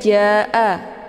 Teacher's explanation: ja'a, ini juga dibaca panjang, boleh 4 atau 5 kali ketukan. Namun ini dinamakan dengan mad wajib muttasil.